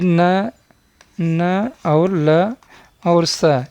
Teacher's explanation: न और ल और स, ये दंत हैं, ये तीनों दंत होते हैं